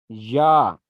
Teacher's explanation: زبان کا درمیان اوپر تالو کے درمیان سے لگے تو یا ادا ہوتا ہے